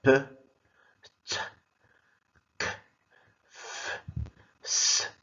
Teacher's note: in the production of these speech sounds, the vocal cords don't vibrate, and these sounds are called voiceless sounds.